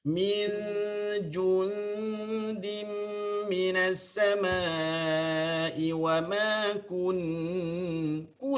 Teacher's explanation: Okey, pada min jundin tu macam ada masalah sikit kat situ. Min ju tu kena muncung betul-betul. Min jun, yo nampak ju tu memang sharp ju.